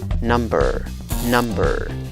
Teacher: La vocal schwa, la que no se pronuncia ni A, ni E, ni O.